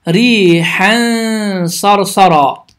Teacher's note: Bu zaman ixfə qaydası baş verir. İxfə qaydası zamanı dilin ucu yuxarı kəsici dişlərin damağına yaxınlaşaraq tələffüz olunur və 2 saniyə miqdarında dayanaraq səs burundan çıxır.